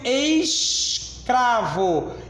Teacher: tanto o S quanto o C obstruíram a minha livre passagem de ar. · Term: encontro consonantal